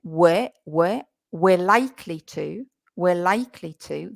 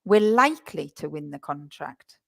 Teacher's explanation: The were is we are. And you're going to be stressing the word likely